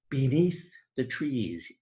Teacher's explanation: the long high vowel E, as in beneath the trees being repeated